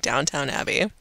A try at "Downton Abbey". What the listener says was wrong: Downton and not downtown. I meant to say Downton. Downton is a place. Downton.